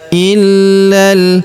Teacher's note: huruf la kita tahan dan kita tekan karena terdapat tanda tasdid di atasnya illal. Lalu huruf la langsung sambung lompat ke huruf lam yang berharakat sukun. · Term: tasydid